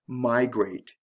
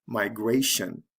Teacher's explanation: the stress is on the first syllable with migrate so it has to shift to the second syllable